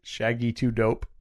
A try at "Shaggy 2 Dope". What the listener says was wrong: No, it's Shaggy 2 Dope. I feel like you're just reading it like a sentence.